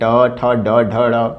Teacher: ट ठ ये दोनों मूर्धा से निकलने वाले हमारे व्यंजन हैं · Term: मूर्धा वाले व्यंजन